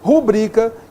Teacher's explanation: Não é rúbrica. Rubrica, que é paroxítona.